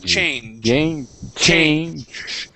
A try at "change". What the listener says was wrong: You're pronouncing more of an sh sound.